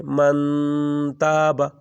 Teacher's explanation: نون کو لمبا کریں گے، نون کو چھپائیں گے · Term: اخفاء